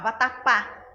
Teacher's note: vatapá última sílaba mais forte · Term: oxítona